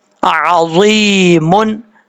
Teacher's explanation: ضا کے بعد یا ہے، یا ساکن سے پہلے زیر ہے، ایک الف کی مقدار اس کو لمبا کریں گے کیونکہ یا مدہ ہے. جب یہاں پہ سٹاپ کریں گے، وقف کریں گے تو میم ساکن ہو جائے گا، اور ملا کے پڑھنا چاہیں گے تو میم کو واو کے ساتھ کنیکٹ کر کے پڑھیں گے.